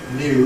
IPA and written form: njuː (new)